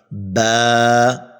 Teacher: बा जो है दोनों होठों के तर हिस्से से अदा होता है · با جو ہے دونوں ہونٹوں کے تر حصے سے ادا ہوتا ہے